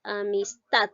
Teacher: Vemos que la sílaba tat lleva la mayor fuerza de voz. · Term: sílaba tónica